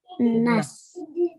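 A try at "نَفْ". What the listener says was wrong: Naf. Naf. So this is a f sound. So your top teeth touch your bottom lip at the front, and you make a f sound.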